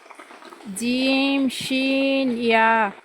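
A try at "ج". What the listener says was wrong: আপনার জিহ্বার মাঝখান উপর তালুতে লাগে নাই, জিহ্বার আগা লাগছে। জিহ্বার মাঝখানটা উপরে তালুতে লাগবে। জিম।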